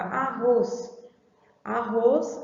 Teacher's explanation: a gente já sente, né, pelo som que o roz é a sílaba forte